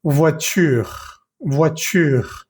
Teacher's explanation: Ahí entiendes y escuchas muy bien la R penúltima, pero la E es complicado, es muy difícil escucharla, no se escucha para nada.